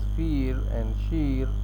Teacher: Those in the eastern states will tend to pronounce fear and sheer without any jaw movement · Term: centering diphthongs